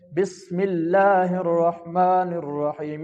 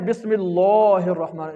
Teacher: تو لفظ اللہ کے پیچھے زیر ہے تو اس لیے اس لفظ اللہ کا جو لام ہے وہ باریک پڑھیں گے